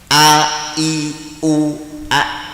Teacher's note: tenggorokan paling bawah a i u a yait namanya pangkal tenggorokan yang perlu diperhatikan untuk a ini adalah dia selalu dibaca tarkik atau tipis